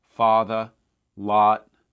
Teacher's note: in new york these tend to stay the same with a little bit of lip rounding